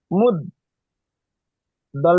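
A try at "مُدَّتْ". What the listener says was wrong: না, দাল তাজবর, এখানে সাকিন আছে দেখেন।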